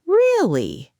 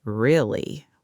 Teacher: Yes, the same words can mean completely different things depending on intonation. Really, with a rising tone, sounds surprised or curious, but really, with a flat, falling tone, sounds sarcastic or unimpressed.